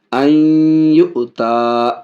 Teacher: ادغام بھی کر رہے ہیں، ناک میں آواز بھی جا رہی ہے غنہ کے ساتھ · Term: ادغام مع الغنہ